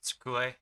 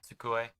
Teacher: But in Japanese, vowel sounds are really short. Sometimes with like the U sound, especially like tsu and su and whatnot, you almost don't pronounce it.